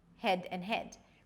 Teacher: Since the 'a' as in cat, 'a', doesn't exist in Brazilian Portuguese, a lot of speakers just merge it into the 'e' sound.